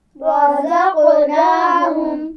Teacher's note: اس میں را کے اوپر زبر ہے، موٹا پڑھیں گے